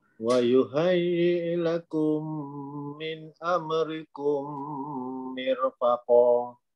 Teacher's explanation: mim mati bertemu dengan mim, hukumnya idgham mithlain saghir, dengung dua harakat